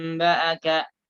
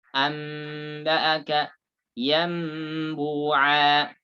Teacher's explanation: Gunnah bersama dengan ikhfa. Jadi ketika bacanya tidak ditekan mimnya. Tidak. Ditempelkan saja. Menempel tanpa ditekan.